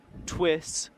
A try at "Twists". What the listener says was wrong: Twists. You have to say it with emphasis. Twists. Twists. Twists. Twists.